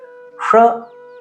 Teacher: ಷ ನಾಲಿಗೆಯನ್ನ ಮಡಿಸಿ ಹೇಳುತ್ತೇವೆ